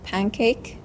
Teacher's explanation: Specifically, this is an example of regressive assimilation where the alveolar nasal n changes to the velar nasal ng.